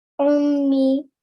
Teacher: I could hear you read the ayn from your throat.